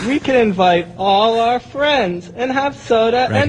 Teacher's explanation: You got that vocal fry, I believe is what they call it.